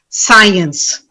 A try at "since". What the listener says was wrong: No, it's not two syllables, not science, it's since, one syllable.